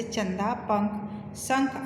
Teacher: अनुस्वार देखिए, अनुस्वार है, इनका उच्चारण नाक से होता है। यह न या म के समान उच्चरित होता है